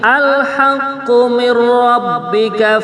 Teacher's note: Maksud daripada idgham bila gunah itu bagaimana? Itu seakan-akan nunnya tidak ada, langsung ra yang bertasydid ya.